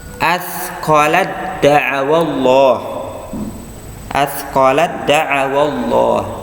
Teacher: ta bertemu dengan dal, ya, maka ya taknya ini mengalah langsung ke dal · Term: idgham mutajanisain